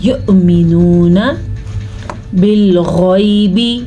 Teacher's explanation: غین کو پر پڑھیں گے کیونکہ غین ہمیشہ ہی پر پڑھا جاتا ہے